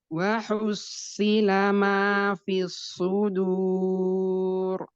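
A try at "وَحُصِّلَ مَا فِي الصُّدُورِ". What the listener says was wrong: Naam, tebalkan lagi huruf shad. Wa hussila ma fis sudur. Nah, waktu wahus itu hanya tipis dulu baru sodnya tebal. Wahusi. Jadi hanya nggak boleh wahusi. Jadi hanya nggak boleh terbawa tebal.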